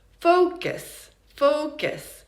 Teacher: It's like just an unstressed mid-central vowel.